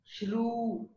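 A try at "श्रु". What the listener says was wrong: It is not shru, not u. It is shr. Shr. It is cerebral. The round, the lips are not rounded when uttering this.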